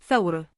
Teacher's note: The voiceless dental fricative sound is represented by ثاء.